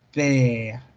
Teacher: Entonces los labios estirados y dura un poco más. La duración es un poco más larga.